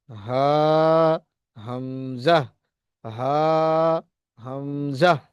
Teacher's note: এটা হচ্ছে কণ্ঠনালীর শুরু। কণ্ঠনালীর শুরু থেকে মাখরাজ উচ্চারণ লাভ, এই হামজা হা উচ্চারণ লাভ করে। হামজা, বলেন হামজা, হা, গম্ভীর আওয়াজ, হা, একদম বুকের কাছে উচ্চারণ হবে, হা, হামজা, হা, হামজা।